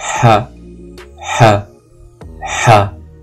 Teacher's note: c'est une lettre gutturale. Donc ha, on la prononce au niveau de la gorge.